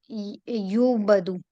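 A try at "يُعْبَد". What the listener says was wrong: یعبدو. یہ آپ نے مڈل والا جو ہے نا اس کو لازم زبر لانی ہے اس پہ, ورنہ نہیں بنے گا. ٹھیک ہے, یہ دو کنڈیشن پوری کرنی ہے, ایک پیش لگانی ہے, ادھر زبر لانی ہے.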